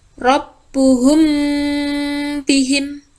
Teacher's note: Jadi, ikhfa safawi itu apabila ada mim mati atau mim sukun bertemu dengan huruf ba, dia dibacanya samar dan berdengung. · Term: Ikhfa Syafawi